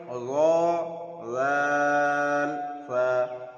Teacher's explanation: জিভের আগা এবং সামনের উপরের 2 দাঁতের আগার সাথে লাগিয়ে উচ্চারিত হয় র জাল সা।